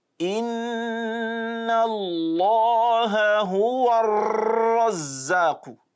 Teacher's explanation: So the flapping is too much, the takrir is too much.